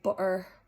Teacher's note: So the glottal stop basically replaces the T with this block sound in the back of your throat.